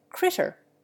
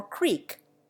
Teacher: There is, for example, short I in place of long E, as in critter for creature.